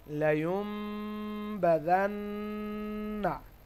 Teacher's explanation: নুনের পরে তাসদীদ থাকার ফলে এখানে ওয়াজিব গুন্না হবে।